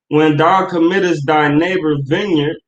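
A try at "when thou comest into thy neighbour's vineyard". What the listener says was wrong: No, when thou committest into. So like it's not committest, comest. When thou comest.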